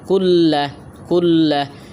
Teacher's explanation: তাসদিদওয়ালা হরফকে দুইবার পড়তে হয়